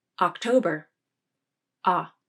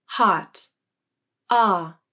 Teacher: Notice the difference in jaw opening and tongue placement. The unstressed ah has less jaw opening, and there is less muscular tension than the stressed ah in hot. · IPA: /ɑ/